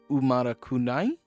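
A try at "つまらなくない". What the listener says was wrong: Correct, you are, and it's tsu, not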